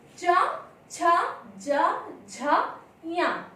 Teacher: इन वर्णों का उच्चारण स्थान करते समय हमारी जिह्वा तालु का स्पर्श करती है